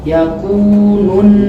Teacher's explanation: Nun gunnahnya lidah ditempel di makhraj nun